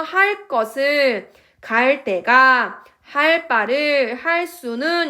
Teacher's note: 관형사형어미 리을 뒤에서 그드브스즈가 끄뜨뿌스쯔가 됩니다. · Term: 된소리